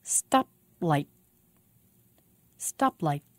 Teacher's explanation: You can hear a stop in the middle of the word and again at the end.